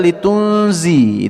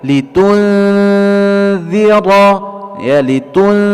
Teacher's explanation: Kemudian tidak dibaca litunzi, ya, di sini bukan huruf zai tapi huruf zal, ya, tapi huruf zal. Jadi huruf zal itu tidak berdesis, tidak keluar angin